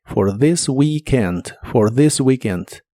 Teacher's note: La TH de this suena como una D vibrante, this. Y la doble E de weekend suena como si fuera una I larga o doble